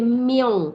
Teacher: Dia jangan baca ming, kalau baca ming nipis, dia baca miong, miong ong tu maksudnya bunyi dia menjadi tebal. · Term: ikhfa hakiki